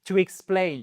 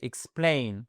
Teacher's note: Vous avez un x. Mais la fin du X, en fait, c'est le début de votre seconde syllabe, et c'est là, où c'est accentué. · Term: accent tonique